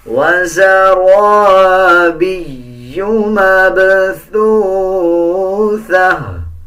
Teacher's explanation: اب جیسے اس یا کے اوپر شد ہے تو یا کو مضبوطی کے ساتھ ادا کیا جائے گا